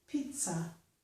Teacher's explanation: So in this word, we get pizza. There's a sound T, so following that, the Z makes a S sound.